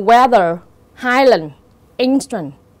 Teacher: trong cái trường hợp các từ weather, highland, instant, dấu nhấn nó sẽ rơi vào âm tiết thứ nhất